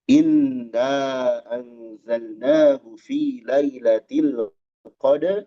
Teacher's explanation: Huruf ro dibaca tebal dalam kondisi waqaf.